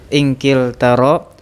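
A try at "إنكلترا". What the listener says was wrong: Ro-nya pakai tasydid, inkil tarro.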